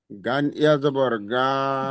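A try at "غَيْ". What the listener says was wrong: গাইন পড়বেন না, গাইন রে, ফে, এই পড়াগুলো পড়বেন না। গইন, গইন ইয়া যাবার গই।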